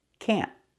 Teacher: This word is not pronounced can in a negative sentence. It's pronounced can't. We have to use a stop t.